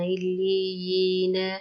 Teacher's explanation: اور یہ یا مدہ ہے تو ایک سیکنڈ اس کو لمبا کرنا، الیینا، یا کو وقف کرنا ہے تو الیین، اور اس کو صرف ایک الف کے برابر لمبا کریں گے، الیین۔